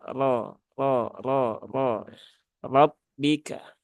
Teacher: kemudian lafaz selanjutnya rabbika rnya di sini dia berbaris fathah maka ketika ro itu berbaris fathah dia dibaca dengan tebal ya dia dibaca dengan tebal caranya yaitu dengan menaikkan pangkal lidah